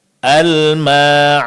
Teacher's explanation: Almaun fokusnya di sini adalah mad alif setelah huruf mim. Ini yang dipanjangkan dua harakat